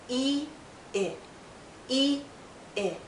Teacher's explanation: e is a very long sound e i is shorter